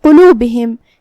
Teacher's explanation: قاف کی ادائیگی کا دھیان رہے، ہمیں اسے تفخیم سے ادا کرنا ہے مطلب بھاری آواز میں. با اور ہا کے نیچے زیر ہے تو اس کا بھی دھیان رہے. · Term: حرف القاف